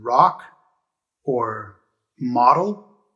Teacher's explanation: the o can have a short sound like ah as in rock or model